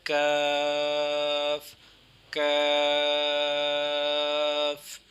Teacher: اس کا مخرج اسی طرح ہی ہے، سیم، تھوڑا سا ڈیفرنٹ اس میں تھوڑا سا یہ ہے کہ زبان کی جڑ اور تالو کے سخت حصے سے ادا ہوتا ہے